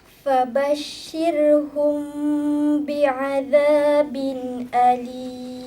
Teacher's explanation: Sembunyikan mim ini serta didengungkan. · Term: Ikhfa syafawi